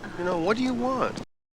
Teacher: So want is the strongest syllable here, but it's quite high like that too.